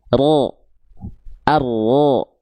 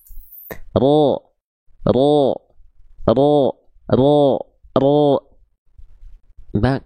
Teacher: Jadi si ujungnya tuh enggak nempel makanya ada celah yang nempelnya tuh punggung lidah.